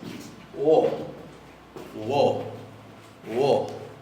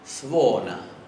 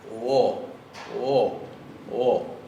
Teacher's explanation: la que no tiene acento se parece un poco más a nuestra O y tiene una pequeña U adelante